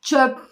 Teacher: sondaki p sesinde dudaklarımızın kapandığını yine orada bir nefes çıkışının olduğunu